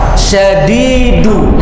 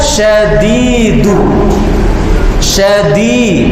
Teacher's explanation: Dia menggunakan punggung lidah disentuhkan ke langit-langit atas. Berarti kurang tepat.